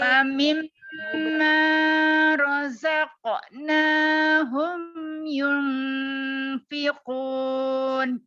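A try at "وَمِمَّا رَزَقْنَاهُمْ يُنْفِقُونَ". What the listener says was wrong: Sabar, humnya itu izhar, dia jelas, jangan diguna. Jadi yang guna itu dia ini, Bu. Wa mimma.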